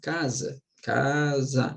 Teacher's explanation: sílaba tônica é a penúltima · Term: paroxítona